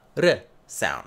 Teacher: That double T in butter gets reduced to a D sound, and because it's between two vowels, you have a little tap, a R sound. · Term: tapped R